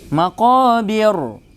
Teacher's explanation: Karena ra di sini disukunkan, sebelumnya kasrah, maka harus tipis, tidak boleh tebal.